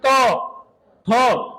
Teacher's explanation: त बोलेंगे तो जीव दांतों के लग रही है त ठ स्पर्श हो रही है तो ये क्या हो गया